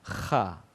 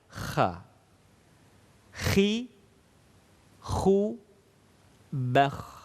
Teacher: semua huruf yang berharokat fathah tidak diucapkan dengan memonyongkan mulut, tidak kho, tetapi terbuka. Kha. Fathah itu artinya terbuka.